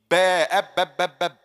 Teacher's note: the two lips touching each other will give me ba